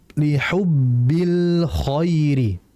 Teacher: Lam al-qamariyah berarti al-nya jelas.